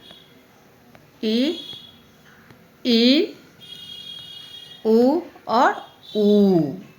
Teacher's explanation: इसमें स्वर के उच्चारण में मुख द्वार कम खुला होता है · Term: समृद्ध स्वर